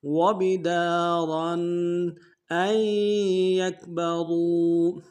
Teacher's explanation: حمزہ کو یا کے سامنے لانا ہے، نون نہیں پڑھیں گے، یا کے اوپر تشدید زور دیں گے